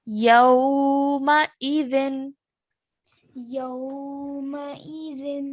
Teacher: Hamza with a kasra, so only stretch for one count.